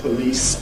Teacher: You tend to hear people saying ‘police’ [ pɵˈliːs ] with perhaps some kind of rounding